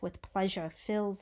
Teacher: with pleasure because that s is actually a z sound there